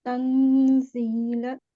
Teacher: noon sakin will be pronounced with a light nasal sound